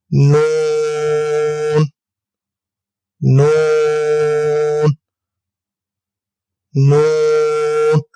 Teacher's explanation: زبان کا کنارہ اور انیاب سے ثنایا تک کے دانتوں کی جڑوں سے ادا ہوگا